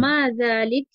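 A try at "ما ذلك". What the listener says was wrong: না, আমরা এখন বলবো মা যালিকা, লাস্টেরটা স্পষ্ট করে দেবো।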